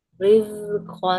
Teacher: Baca rizkon tanpa ada angin, jangan riz.